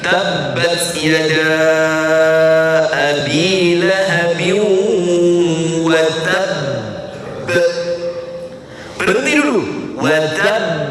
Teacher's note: syiddahnya dimatikan dulu baru mantul untuk qalqalahnya